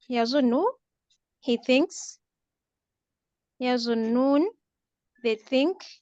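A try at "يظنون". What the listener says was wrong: Look, noon has a shad, so you have to pronounce two noon. Yazunnu. Yazunnuna. See, there are two noon.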